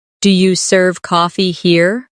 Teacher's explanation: In casual speech, do you becomes dia.